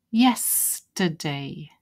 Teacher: I put the stress there first on the yes then we've got yesterday